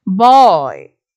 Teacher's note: Boy, where you have the diphthong oi